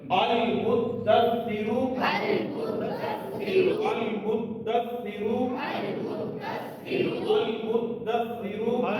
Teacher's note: पहले दाल के ऊपर ठहरे, जम के फिर सा के ऊपर 2 दफा शद है, दाल के ऊपर भी सा के ऊपर भी।